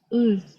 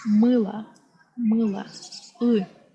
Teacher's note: Your tongue goes slightly back